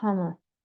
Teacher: again the r is not pronounced